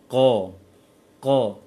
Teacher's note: Qaf makhrajnya adalah pangkal lisan dekat ke tenggorokan.